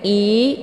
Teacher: Hamzah dibaca jelas letak posisinya di tenggorokan bagian bawah